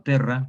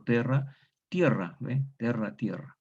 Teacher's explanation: esta tónica abierta diptongo en español en ie